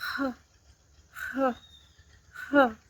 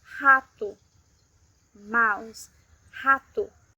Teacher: When at the beginning of a word, it sounds like the H in English